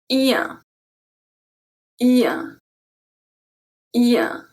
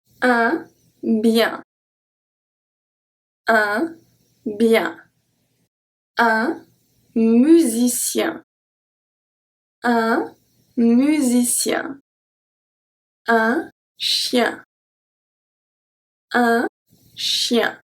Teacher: And then the middle of it is going to go and touch the palate. The air goes through the mouth and through the nose, since we have a nasal sound, and the lips are slightly stretched horizontally.